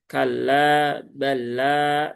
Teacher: Lam tasdidnya jangan nahan terlalu lama. Di sini ada lam bertemu dengan lam ya.